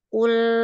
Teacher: Jadi ketika kof itu pangkal lidahnya naik, ketika lam sudah diturunkan lagi.